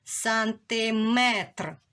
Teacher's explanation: І в нас є ненаголошена и, яку ми інколи чуємо як е.